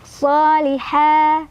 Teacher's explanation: ha mad tabi'i karena ada fathah berdiri di atas huruf ha, dipanjangkan 2 harokat.